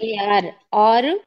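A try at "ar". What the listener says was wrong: అర్రు అర్రు ఆరు కాదు, అర్రు ఎర్రు ఏరు. ఏరు అన్ని.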